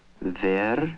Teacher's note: there is no w sound in Russian, and he uses the nearest sound to it, the v.